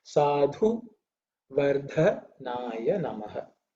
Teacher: There are two dha. Both of them are the fourth letter in the tha varga, which means it should be pronounced with aspiration, with a little bit of air, effort.